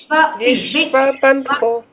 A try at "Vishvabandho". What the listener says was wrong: See, bandho. Bandho. Bandho. You are missing that na pause.